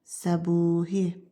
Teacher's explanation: Qalın dodaqlanan, qapalı sait U-dur. O da uzun tələffüz olunur səbuhi sözündə.